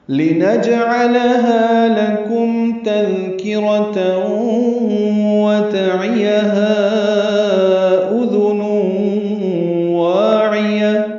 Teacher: لام کو جلدی ادا کرنا ہے. نج جیم ساکن پہ قلقلہ، عین وسط حلق سے ادا ہوگا. لام باریک، ہا الف مدہ.